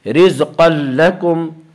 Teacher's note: اس را کا قاعدہ یہ ہے کہ را کے اوپر زبر اور پیش آئے تو را کو پر پڑھیں گے، را کے نیچے زیر آئے تو را کو باریک پڑھیں گے، یہاں را کے نیچے زیر اس لیے را کو باریک پڑھیں گے۔ رزقا لکم، قاف کو پر پڑھیں گے، قاف حروف مستعلیہ میں سے ہے، حروف مستعلیہ 7 ہیں جن کا مجموعہ خص ضغط قز ہے جو ہمیشہ ہر حال میں پر پڑھے جاتے ہیں۔